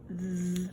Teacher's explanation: where your tongue comes out of your mouth, th, between your teeth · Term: sound of th